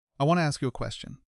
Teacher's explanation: Want to drops its sharp T sound and transforms into wanna. So, instead of I want to ask you a question, in real conversation, it becomes I want to ask you a question.